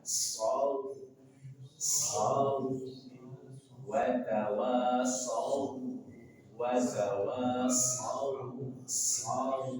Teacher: Ada waw sukun sebelumnya fathah, maka bacaan lim, bacaan lembut mengalir tanpa ada penekanan. Saw, saw, wa tawassaw, wa tawassaw, saw, tanpa penekanan saw, saw tapi saw lembut.